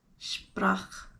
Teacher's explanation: I'm doing the trill there, aren't I? That's hard because it's right next to the P.